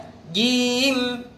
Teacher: makhrajnya jim itu adalah tengah lidah mengenai langit-langit yang di atasnya. Jadi lidah bagian tengah kita tempelkan ke rongga yang di atasnya.